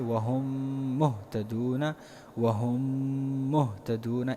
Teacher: دیکھیے میم ساکن کے بعد اگر دوسرا میم آیا ہو، یعنی میم ساکن کے بعد اگر کوئی میم ہو تو اس کا حکم یہ ہے کہ یہاں پر آپ نے غنہ کرنا ہے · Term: ادغام والا غنہ